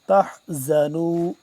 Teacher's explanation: ولا تہنوا ولا تحزنوا، زا کو سختی سے ذال سے جدا کر کے، تحزنوا، زا سختی سے پڑھا جاتا ہے اور جبکہ ذال کو نرمی سے پڑھتے ہیں